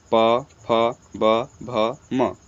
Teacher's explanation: ओष्ठ से बोले जाते हैं